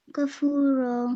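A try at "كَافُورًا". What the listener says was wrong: نہیں الف مدہ کاف کو الف کے ساتھ کھینچ کے پڑھیے مدہ ہے نا الف مدہ کھینچ کے پڑھیں گے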